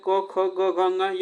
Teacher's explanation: जो कंठ से उच्चारण होते हैं, क ख ग घ ङ, यह कंठ से उच्चारण होते हैं